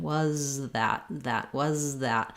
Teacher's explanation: when I'm saying was, my tongue is back behind my teeth, the air is flowing and continuous. And then to move, I need to move from that Z position to the TH position. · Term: z sound, Z sound